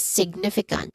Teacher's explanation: stress syllable is on the first syllable